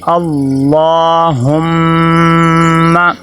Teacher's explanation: لفظ اللہ کے پیچھے زبر ہے، اس کو تھوڑا سا موٹا کر کے پر کر کے پڑھیں گے۔ اللہم، یہ دیکھیں آگے میم مشدد ہے، میم مشدد پہ غنہ ہوگا۔